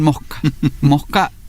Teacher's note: La más clásica es la aspiración de la S final · Y en la zona rural, esa aspiración de ese final incluso es la sustitución del sonido del fonema correspondiente a la letra S por un sonido más bien parecido a lo que se produciría cuando producimos el sonido de la letra J